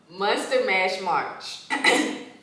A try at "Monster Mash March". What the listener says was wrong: March, not Marsh. Because last time you said Marsh.